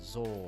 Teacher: when we have an NG as a final we do not pronounce it and it we just extend the pronunciation of the vowel that